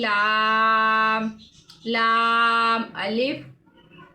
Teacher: اب لام کی ناک میں آواز نہیں جائے گی